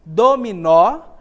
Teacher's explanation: ou é o nó perceba que a palavra Olha só dominó a sílaba mais intensa que a pronunciada com mais força é a última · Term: sílaba tônica